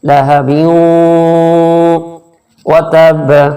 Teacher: بیوں پہ تھوڑا سا ناک میں آواز نکالیں گے یعنی کہ گناہ کریں گے